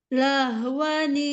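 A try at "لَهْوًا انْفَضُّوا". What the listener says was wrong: Ya, tapi ikfa-nya fa nempel di huruf fa. Coba huruf fa dulu gimana? Afa. Iya, nimfa nempel kayak tadi. Jangan terlambat, langsung. Nimfa.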